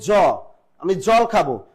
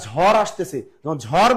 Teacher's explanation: ঝর বললাম তখন কিন্তু স্ট্রেস মারলাম এজন্য এটা হল মহাপ্রাণ ধ্বনি